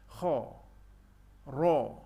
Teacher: Yang kha, ra, bibir kita dalam keadaan yang agak muncung sebab menyebut kedua-dua huruf ini yang agak tebal